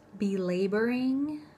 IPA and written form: bɪˈleɪbərɪŋ (belabouring)